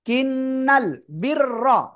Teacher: রর উপরে জবর মোটা আওয়াজে পড়তে হবে